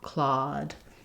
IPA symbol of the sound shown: ɔ